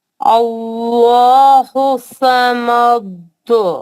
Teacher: इसमें जलाला को मोटा पढ़ेंगे वहाँ, क्योंकि उससे पहले वाले हरफ पर जबर आया है तो उनको मोटा पढ़ा जाएगा।